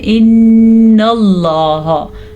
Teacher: نون کے اوپر شد ہے تو غنہ ضرور کرنا ہے آپ نے، ان اللہ نہیں پڑھنا، آپ نے پڑھنا ہے ان اللہ، لفظ اللہ کو پر پڑھنا ہے کیونکہ لفظ اللہ سے پہلے زبر ہے۔